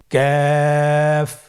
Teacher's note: কাফের মাখরাজ হলো জিহ্বার গোড়া থেকে একটু আগে বাড়িয়ে তার বরাবর উপরে তালির সঙ্গে লাগিয়ে উচ্চারিত হয়। · কাফ উচ্চারণের ক্ষেত্রে অবশ্যই পাতলা করে উচ্চারণ করতে হবে এবং তিন আলিফ টেনে পড়তে হবে।